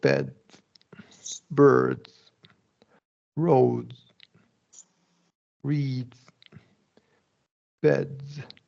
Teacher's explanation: The thing here though, is because L, R, and vowels are all voiced, you're just going to keep that voicing going, right? The D is going to be voiced, the S is going to be a Z sound, which is voiced. So you're just keeping that voicing going the whole time.